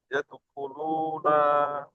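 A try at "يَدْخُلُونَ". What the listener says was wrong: না টান হয়ে যাচ্ছে, নুনের উপরে যাবার হারাকাত। হারাকাতের পড়াকে তাড়াতাড়ি পড়তে হবে, টান দেওয়া নিষেধ।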